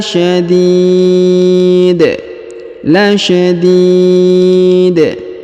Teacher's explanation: huruf di terdapat ya sukun atau ya mati kemudian huruf da di ujung disukunkan dan kita pantulkan ya atau kita qolqolahkan